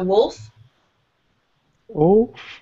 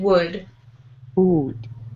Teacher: I say the L a little bit on wolf, but I don't say the L in wood. So they're similar words, but they have a difference in the way that you say the L.